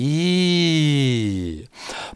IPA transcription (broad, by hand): j